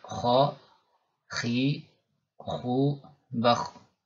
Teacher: terangkatnya lidah ke langit-langit mulut ketika pengucapan huruf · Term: isti'la